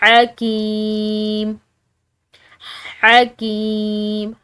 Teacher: کاف کے بعد یا ساکن کی وجہ سے اس کو ہم ایک الف کی مقدار کھینچ کر پڑھیں گے